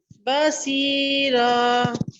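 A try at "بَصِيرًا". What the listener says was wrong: सी नहीं, सुई, सुई मुस्ताइलिया से है सॉफ्ट, बसीरा। बा को मोटा नहीं करेंगे, बसीरा करेंगे इसको, बा बिल्कुल बारीक होगा, बसीरा, अच्छा देखें, बला मद है ना, 4 काउंट्स तक लंबा करेंगे और बसीरा आखिर में रा पुर है।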